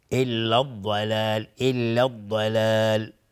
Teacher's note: الضلال الف لام شمسی است و ضاد از حروف استعلاء است. ضاد از حروف استعلاء غلیظ تلفظ میشه.